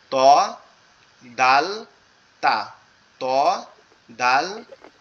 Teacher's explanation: তটাও হচ্ছে আমাদের জিহ্বার আগা সামনের উপরের দুই দাঁতের গোড়ার সঙ্গে। ত, এই দুই দাঁতের গোড়ার থেকে তিনটা অক্ষর উচ্চারণ হবে।